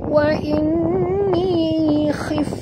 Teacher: Jadi bunyikan betul-betul khif dan bunyikan hamas pada fa khif ya. Macam mana nak bunyi khif itu ketap ya, gigi atas kita ni ke bibir bawah. Wa inni khif keluar angin ya di bibir kita.